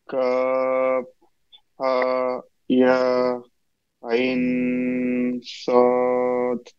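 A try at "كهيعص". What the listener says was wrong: একসাথে বলার চেষ্টা করবো, হ্যাঁ। মাঝখানে নিঃশ্বাস ছাড়বো না।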